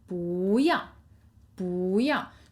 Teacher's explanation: But because of the tone change rule, you would say 不 要 不 要. So second tone, you do a little hop